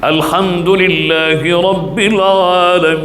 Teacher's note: 6 harakat, sukunkan huruf yang terakhir